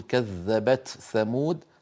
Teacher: والثاء من طرف اللسان مع أطراف الثنايا فهذان الحرفان متقاربان في المخرج.